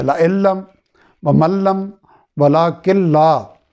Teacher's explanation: لَإِن اصل میں کیا تھا؟ لَإِن لم، یعنی نون کو لام سے بدل دیا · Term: ادغام